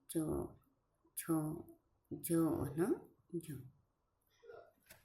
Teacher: 5, સ્પર્શ સંકર્ષી ધ્વનિઓ. જીભ મુખપંથના ઉપરના કોઈક ભાગને થોડીવાર સ્પર્શ કરીને અને પછી સંઘર્ષ કરે છે ત્યારે સ્પર્શ સંઘર્ષ ધ્વનિઓ ઉત્પન્ન થાય છે.